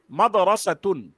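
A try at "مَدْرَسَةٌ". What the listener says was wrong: মাদ্রাসাতুন, মাদ্রাসাতুন, মাদ্রাসাতুন, মাদ্রাসাতুন, মাদ্রাসাতুন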